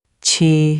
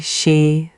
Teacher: Notice how chi and xi are cousins. Same smile, same low tongue, but chi has that little extra puff, and xi just hisses. · Oh, wow, I actually am. The Q has more push, and the she is just air. That's the trick.